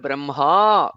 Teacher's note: In Samskrita, the word Brahma with a longer vowel, longer akara at the end